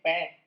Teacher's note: इसका ओष्ठ स्थान और स्पष्ट प्रयत्न दोनों ओष्ठों को मिलाकर बोलना